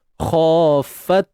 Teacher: Ta yang mati di sini terdapat syiddah mahmusah. Iaitu suara yang tertahan dan nafas yang terlepas. Tahan suara dulu.